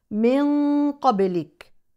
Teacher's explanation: ان انزل من قبلك النون كذلك تخفى لان الحرف التالي قاف ولكن اقصى اللسان يلامس مخرج القاف مع تفخيم الغنه لان القاف حرف مفخم